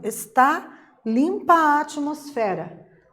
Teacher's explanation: curiosidade com relação as vogais né se para compor o verso existe ali uma Harmonia sonora Entre as vogais que no momento da fala dá a impressão que a gente só tá falando uma única vez Então eu não conto cada vogal separadamente como se fosse uma · Vejam que também atmosfera, o fé é a sílaba mais intensa da palavra atmosfera, portanto é a sílaba tônica, né? A sílaba mais forte.